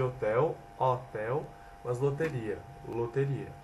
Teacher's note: A abertura das vogais pretônicas E e O, que passa para E e O, conforme a vogal da sílaba anterior, que induz sua abertura ou fechamento.